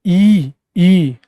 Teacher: जब आप बोलते हैं ई ई तो आपकी जीभ कहीं ना कहीं तालु की ओर जाती है